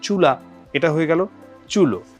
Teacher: আগে উ থাকলে পরে ও হয়ে যাচ্ছে